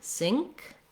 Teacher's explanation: we have our ng sound where the back of our tongue lifts